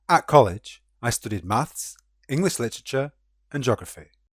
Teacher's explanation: we have rising tones on maths and English, and a falling tone on geography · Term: rising and falling tones